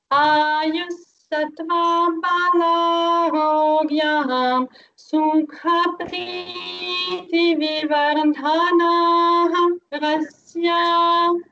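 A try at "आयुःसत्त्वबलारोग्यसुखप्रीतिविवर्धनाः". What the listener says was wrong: Ayusattva is not there. Ayusattva. That is a short vowel. Balarogya. Rogya. No elongation. Rogya. Sukha. And there is no visarga also. There is no dot. So balarogya. Sukha. Preeti Vivardhanaha. So those two places.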